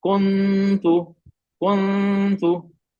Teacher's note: नून के मखरज पे जबान लगा देते हैं, जबान की नोक